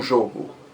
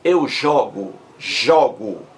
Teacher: Então veja que as palavras jogo e jogo são palavras que têm a mesma grafia, mas a pronúncia é diferente. Jogo, o primeiro O é fechado, substantivo, o jogo. Já o verbo é aberto, eu jogo, jogo